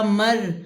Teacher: را کے اوپر جزم، ما قبل زبر موٹا پڑھا جاتا ہے